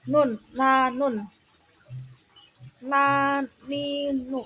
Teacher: Bertemunya ujung lidah dengan gusi atas sehingga udara tertahan. Keluarnya udara dari rongga hidung. Nun naun na ni nu bergetar ya su kita suara bergetar.